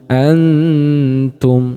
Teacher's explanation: Jadi bunyinya cenderung nun sukunnya lebih jelas. Jadi tidak terlalu samar gitu. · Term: ikhfa aqrab